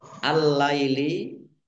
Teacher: Ini harusnya lamnya double. Lam tasdid ya ditandai dengan ada lam tasdid lamnya dibaca double.